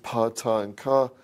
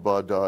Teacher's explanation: So, pa, ta, and ka have longer VOT values.